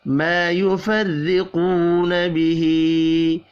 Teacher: مَا يُفَرِّقُونَ بِهِ، الف اور واو مدہ ایک ایک الف کے برابر کھینچ کر پڑھے جائیں گے، کھڑی زیر کو بھی ایک الف کے برابر کھینچ کر پڑھیں گے، اور را باریک پڑھا جائے گا زیر کی وجہ سے، قاف حروف مستعلیہ ہے، پر پڑھیں گے۔